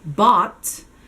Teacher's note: it's just going to have an open o, short o vowel sound